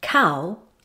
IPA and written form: kaʊ (cow)